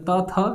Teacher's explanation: ता था, ये आपका जाता है दंत में